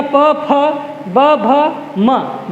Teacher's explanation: ओष्ठ, ओष्ठ में देखो, ओष्ठ में देखना प, फ, ब, भ, म, जब तक होठ आपस में स्पर्श नहीं करते तब तक हम इनका उच्चारण नहीं कर सकते हैं